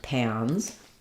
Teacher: the n Sound makes the a a little bit more nasalized a little bit more closed you don't have to intentionally make a different vowel here though · Just go for the ah sound and that amount of openness and know that it'll naturally be higher and more nasal because of the n.